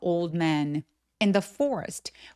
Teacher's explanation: 대신에 올드 man는 안 돼요. Old드 아니고 old 하면서 가볍게 D 소리만내는 거예요.